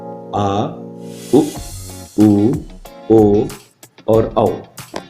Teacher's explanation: पश्च स्वर, जिसके उच्चारण में जीभ का पश्च अर्थात पिछला भाग प्रयोग होता है, जिसमें शामिल हैं आ, उ, ओ और औ।